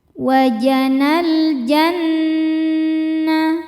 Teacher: Cara bacanya berdengung. Tahan dengungannya kurang lebih dua harakat. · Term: ghunah musyaddadah